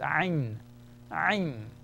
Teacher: This one that you're looking at is ayn, ayn. Contraction of your throat. Ayn, it's a glottal sound. Ayn, ah, ah.